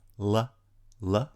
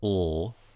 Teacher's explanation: curl on it the velarized alveolar lateral approximant right ol right the difference is the clear l la la like laugh and the dark l is the ol in fall or ball